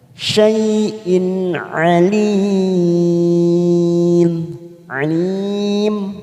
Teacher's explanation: kita baca jelas tanpa mendengung namanya izhar halqi